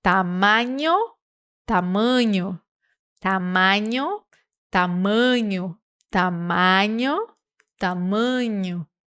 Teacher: no português, nós fazemos uma nasalização da letra A. Sempre que a letra A, quando ela tem um tio em cima, um acento circunflexo, ou quando ela vem antes da letra M ou N, M de de Maria e N de Nádia, tá?